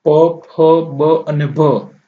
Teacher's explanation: બોલતા હોઠ એકબીજાને સ્પર્શ કરે છે